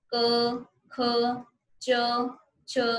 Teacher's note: जब कंपन होती है किसी चीज में बोलते टाइम तो वो आपके घोष है, और विदाउट कंपन जो है अगर आप बोलते हैं तो आपके वो क्या है, अघोष है